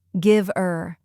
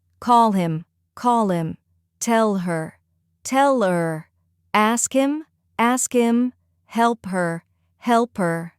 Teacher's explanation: Americans sometimes drop the H in words like him, her, he, have, especially after a consonant. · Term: reducing the H sound